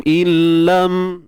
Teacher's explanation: Kita masukkan nun ke dalam lam tanpa dengung lah, illam. Kat sini idgham kamil, sempurna. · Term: idgham bila gunnah